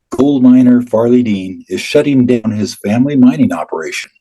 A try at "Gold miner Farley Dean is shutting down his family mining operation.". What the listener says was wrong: Say mining operation. There, look at how you did that. You said mining operation. When you're reading it, it's like you're the mining operate. You're like mining operation. It's like fading away. The word operation.